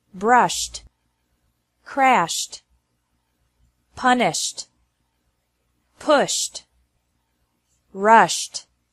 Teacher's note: Ed is pronounced like T after verbs ending with an sh sound